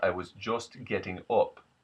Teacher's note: the short U, becomes something closer to an O sound